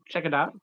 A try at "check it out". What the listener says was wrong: I was saying, I was emphasizing the T, but we don't emphasize the T.